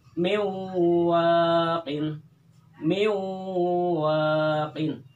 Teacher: Jadi di wawunya itu didengungkan, kemudian ditahan 2 harokat atau 1 alif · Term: idgham bi gunnah